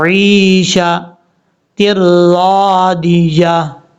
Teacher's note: آگے یا مد ہے، اس کو لمبا کریں گے